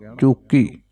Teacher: ਚੂਕੀ ਚੱਚੇ ਤੇ ਅਦਕ ਕਸ ਕੇ ਪੜ੍ਹਨਾ ਹੈ ਜੀ